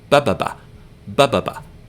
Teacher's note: There's no emphasis in this word, ba-ba-ba. It's just 3 short syllables.